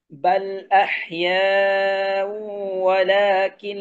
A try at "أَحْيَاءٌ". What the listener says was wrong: আহিয়া উ হামজাটা আরেকটু শক্ত করেন। আর এই যে ওয়ালাকিল্লা, ঠিক আছে, এটাকে একটু যেন আলাদা করে বলবেন, যেন ওয়ালাকিল্লা একসাথে না হয়ে যায়। ওয়ালাকিল্লা তাশউরুন, ঠিক আছে?